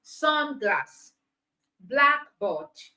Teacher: So the combination of these two words to form another word is compound word. So because these compound words are nouns, it means the stress is on the first syllable.